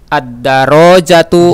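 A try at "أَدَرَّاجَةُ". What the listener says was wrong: Jangan disambung dengan ad. A, dia terpisah. A. A itu dia. Ra-nya ditasdid. Ad-darajatu.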